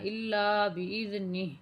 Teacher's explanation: وقف ہوگا بإذنہ کے اوپر، موٹے ہا کا آپ نے آواز نکالنا ہے، پھر وقف کرنا ہے